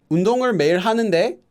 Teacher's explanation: The very last syllable will go up. So if you don't have a 요, that means the 대 will go up slightly.